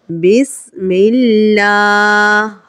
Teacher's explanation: یہاں پہ اللہ عز و جل کے نام سے پہلے جو حرف ہے میم ہے اور اس کے نیچے جو علامت لگی ہوئی ہے لائن، یہ جو نشانی ہے اس کا نام گرین کلر سے جو دکھ رہی ہے اس کا نام زیر ہے۔ یہاں یہ زیر ہونے کی وجہ سے لفظ اللہ عز و جل یعنی اسم جلالت اللہ عز و جل کو باریک پڑھیں گے